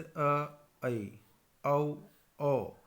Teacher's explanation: अर्धविवृत यानी कि जिसमें आधा मुंह खुलेगा, जैसे ऐ, औ, ओ।